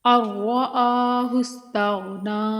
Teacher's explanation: نون ساکن یہاں پر حذف ہو جائے گا، حمزہ کو را سے ملائیں گے۔ ارآہ، را مشدد ہے، سختی کے ساتھ رک کر پڑھیں گے اور بغیر کھنچے۔